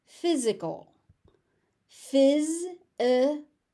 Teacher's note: So the S becomes a Z sound in the middle.